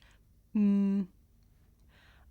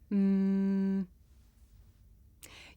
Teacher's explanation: I can even feel my nose vibrating